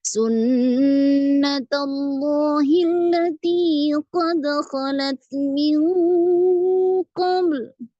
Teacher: Kemudian di ayat 23 nada naiknya di bagian pertama